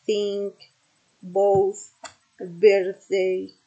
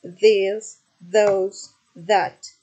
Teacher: Then the other feature is this is dental. It's a consonant articulated with the tongue against the upper teeth